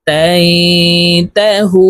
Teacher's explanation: পেশের বাম পাশে জজমওয়ালা ওয়াও মদের হরফ, তো এই হা ওয়ার সাথে এক আলিফ টেনে পড়তে হবে, এই মদকে মধ্যে তবাই বলা হয়।